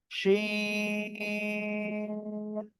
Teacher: জিহ্বার মাঝখান তার বরাবর উপরে তালুর সঙ্গে লাগিয়ে সা সা শব্দ করে আপনি উচ্চারণ করবেন, 3 আলিফ টেনে পড়তে হবে।